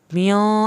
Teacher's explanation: मियो आपने यहाँ पे गुन्ना किया, एक अलिफ के बराबर देर लगाई। जहाँ भी गुन्ना करेंगे आपने देर लगानी है।